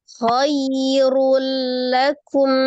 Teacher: Runnya dihilangkan tanwinnya ya. Maka langsung ditasdidkan ke huruf lam.